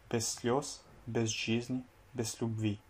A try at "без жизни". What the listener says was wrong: Без жизни. Alors, là, il y a plusieurs problèmes. Après le G, quand tu as un I, tu dois le prononcer comme si c'était un U. Donc, c'est pas жизни, mais c'est жизни. Жизни.